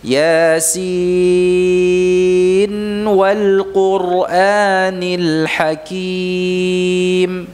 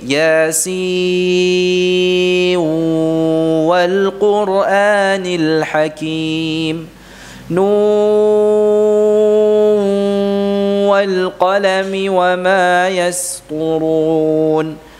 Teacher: Jangan diidghamkan, tapi dijelaskan, ya, diperjelas suara nunnya.